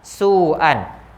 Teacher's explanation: Waw sebagai huruf mad jumpa dengan hamzah dalam satu perkataan, panjangnya dibaca dengan 4 harakat, nama hukumnya mad wajib muttasil.